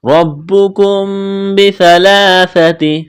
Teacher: میم ساکن کے بعد با ہے، یہاں پر غنہ کریں گے، آواز ناک میں چھپائیں گے